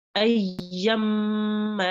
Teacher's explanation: Mushaddad meme and mushaddad noon. We do ghunna and stay on it for 2 seconds.